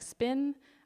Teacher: how we pronounce the P when it's in the middle of the word like spin so it's a P but it doesn't have as much pop and then the last P has a big pop so so